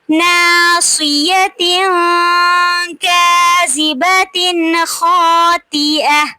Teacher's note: تنوین کے بعد کاف آ رہا ہے حروف اخفا میں سے تو یہاں پہ ہم آواز کو تھوڑی دیر کے لیے ناک میں چھپائیں گے · کاذبۃ خاطئہ تنوین کے بعد حروف حلقی میں سے خا آ رہا ہے تو ہم اس کو ظاہر کر کے پڑھیں گے اظہار کریں گے.